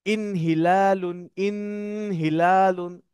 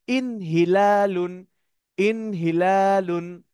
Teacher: আমাকে গুন্না ছাড়া স্পষ্ট করে পড়তে হবে।